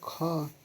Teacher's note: लेकिन बोलेंगे खा तो ज़्यादा हवा निकल रही है मुंह से, तो हो जाएगा महाप्राण